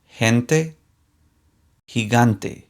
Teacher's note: the weak G sounds like the English H